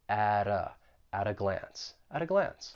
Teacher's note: that T in at, I'm going to pronounce it with a flap T, and then I will link it with the vowel sound in that article.